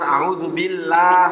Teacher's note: lamnya jangan dibaca tebal